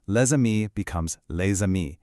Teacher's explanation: Basically, we blend the sounds together. So the s in le, which is usually silent, suddenly wakes up and makes this buzzing z sound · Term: liaison